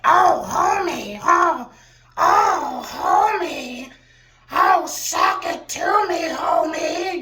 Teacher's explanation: real rumbly groggly voice